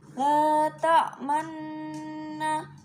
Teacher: Ismam yaitu mencampurkan harokat fathah ke dalam doma serta bibirnya dimonyongkan.